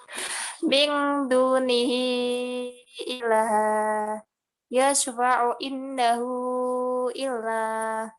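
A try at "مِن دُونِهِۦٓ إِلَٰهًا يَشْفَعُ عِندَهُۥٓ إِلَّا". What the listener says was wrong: Agak panjang ya. Terus masih kurang panjang lagi ya. Masih terlalu pendek ini. Jadi baca mat itu jangan eman-eman ya. Baca mat jaiz jangan eman. Mat wajib yang panjang-panjang itu jangan eman-eman.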